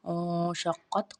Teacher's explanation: او میں ہم نے اخفا کیا ہے، نون ساکن کے بعد شین ہے ، شین حرف اخفا میں سے ہے، قاف موٹا پڑا جائے